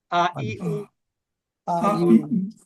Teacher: কণ্ঠনালী, অর্থাৎ গলা থেকে যে অক্ষরগুলো হয় তার মধ্যে এটা হচ্ছে হামজা জবর আ